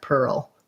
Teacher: One thing that you'll notice is to go from the to the ul, you end up with a little tiny kind of hidden schwa in there.